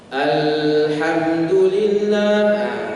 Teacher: Kemudian kesalahan yang berikutnya adalah yaitu memanjangkan bunyi lamnya.